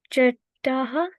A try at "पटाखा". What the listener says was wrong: नहीं, ये पहले पे है। अगर ये चे होता। जी, पटाखा।